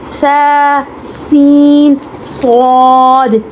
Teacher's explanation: ثا کو نرمی کے ساتھ باریک، سین کو سیٹی کے ساتھ باریک، اور صاد کو سیٹی کے ساتھ موٹا پڑھا